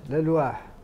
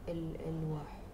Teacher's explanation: حركه الهمز لورش تنتقل للساكن الصحيح قبل المفصل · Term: نقل